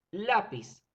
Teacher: la sílaba tónica está en la sílaba la verificamos que la palabra termina en zeta por lo tanto voy